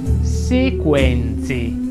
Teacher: Sequenze vuole una delle tre E aperta